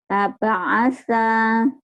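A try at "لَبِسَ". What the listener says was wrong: Laba'asa gitu. Kalau laba'asa itu ada madnya.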